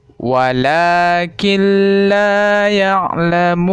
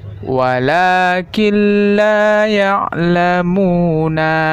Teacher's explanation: Seolah-olah kita memasukkan bunyi nun ke huruf lam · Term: idgham bila gunnah